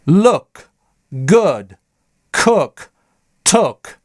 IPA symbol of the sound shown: ʊ